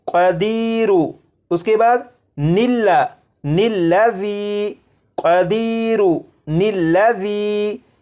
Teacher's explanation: ان دونوں الفاظ کو آپس میں ملانے کے لیے ان کے درمیان ایک نون کا اضافہ کریں گے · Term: نون قطنی